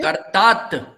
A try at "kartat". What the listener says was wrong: You are saying karta. What about the single T? Final T has to be pronounced, no? Kartat. It has to be audible. Tat. Kartat. It is better to exaggerate a little bit in language learning in the initial stage. Then you will pronounce it correctly.